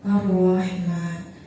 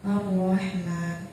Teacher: Di situ ada al-ta'rif bertemu dengan salah satu huruf al-ta'rif idgham syamsiyah yaitu ra yang bertasydid, maka cara bacanya didghamkan.